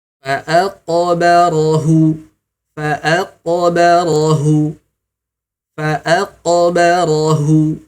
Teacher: Dipantulkannya dengan pantulan yang sempurna ya. Kemudian dengan pantulan yang tebal ya.